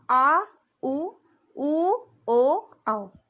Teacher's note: पश्च जीभ का जो पिछला हिस्सा है वो हम आ उ ओ औ बोलने के लिए उपयोग करते हैं